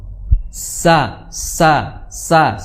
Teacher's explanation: sin ujung lidah bertemu dengan gigi seri bawah.